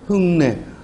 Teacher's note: 흙내. 이렇게 안울림 소리 기역이 비음 니은을 만나서 역시 비음 이응으로 바뀌었어. 그러니까 무슨 현상? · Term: 비음화